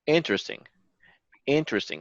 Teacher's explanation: so we're stressing on the first syllable